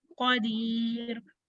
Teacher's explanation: कॉफ को हमने हैवी रखना है.